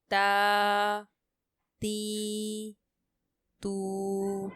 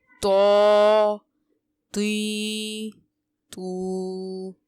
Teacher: تا اور تو یہ دونوں حروف قریب الصوت ہیں، ان کی آواز میں ڈیفرنس کیسے ہوگا کہ تو کو ہم پر پڑھیں گے حروف مستعلیہ میں سے